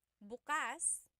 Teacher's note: If you say bukas, the emphasis is on the second syllable. That means open.